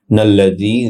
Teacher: জাল নরম হবে, এক আলিফ লম্বা হবে